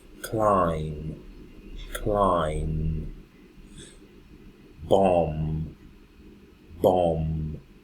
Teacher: every time I have the M the M and the B together the B doesn't have any sound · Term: silent consonant sounds